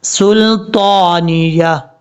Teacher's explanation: سین کو جب لام سے ملائیں گے تو لام میں قلقلہ نہیں کرنا